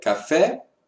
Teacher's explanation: nous avons l'accent aigu, il ouvre le son.